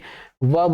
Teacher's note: नीचे वाला होठ जो है ऊपर वाले दांत से सट जा रहा है, तो यह दंतोष्ठ हुआ है ना।